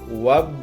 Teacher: Yang ketujuh ini hukumnya yaitu qalqalah sugro karena huruf qalqalah ba berharokat sukun dan posisinya di dalam tengah kalimat. Maka cara membacanya harus dipantulkan secara ringan